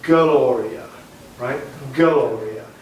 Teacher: So you don't have to put a K in, but the nice thing is we get a vowel between the G and the L, and when you hit the O of Gloria, you've already had pitch before the orchestra sounds, and you win. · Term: schwa